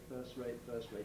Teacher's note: you can elide the t in first